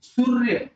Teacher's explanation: ज्यावेळेस आपण सूर्य असा उच्चार करतोय त्यावेळेस र वर आपण रफार लिहिलेला आहे आणि स चा दीर्घ उ आहे, उकार आहे, आणि काय होतं या ठिकाणी स वर आपला बोलताना आघात होतोय, स वर आघात होतो नंतर स वर आपण जोर देऊन बोलतोय. स या शब्दाचा उच्चार करत असताना त्याच्यावर जोर दिल्यामुळे सूर्य असा आपण याचा उच्चार करतो, त्यावेळेस आपण रफार लिहिला आहे आधी, तर रफार लिहिला की नाही.